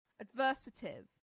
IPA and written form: ədˈvɜːsətɪv (adversative)